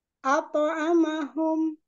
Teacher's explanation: itu dari lisan ya dari lisan kemudian ketemu dengan huruf ainnya ainnya itu dari alhalqi jadi enggak ada pengaruh di bibir-bibirnya